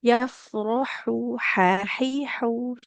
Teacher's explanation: ha di tengah tenggorokan